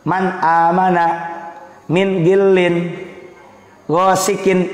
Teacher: Jelas bunyi n-nya ketika nun sukun atau tanwin bertemu dengan salah satu huruf yang 6, huruf tenggorokan. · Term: izhar